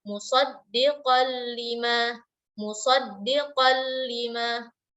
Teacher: Jadi langsung ke makhraj lam, tidak ada lagi kita stop musaddiqan lima. Tidak stop di makhraj nun dan tidak ada bunyi dengung. Jadi langsung ke makhraj lam. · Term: idgham